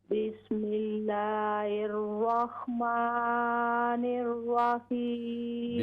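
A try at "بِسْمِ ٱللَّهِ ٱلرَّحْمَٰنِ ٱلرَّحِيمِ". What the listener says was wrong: बिस्मिल्लाहिर, हा दुरुस्त करें, बिस्मिल्लाहिर रहमानिर रहीम।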